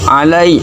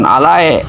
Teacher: suara ya sukun itu bunyinya i, bukan e